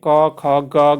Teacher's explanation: क वर्ग के जो होते हैं दोस्तों कंठ से होते हैं